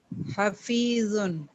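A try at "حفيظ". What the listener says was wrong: حفیظ تھوڑا سا آپ کو اور موٹا کرنا ہے.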